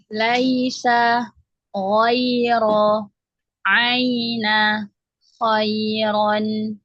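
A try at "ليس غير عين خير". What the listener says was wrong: Ya, tadi kepanjangan ya. Lebih satu harokat.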